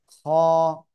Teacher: গলার শেষ ভাগ থেকে এই অক্ষরটা মোটা আওয়াজে আকার একি টেনে উচ্চারণ করতে হবে খ অনেকটা এই যে খ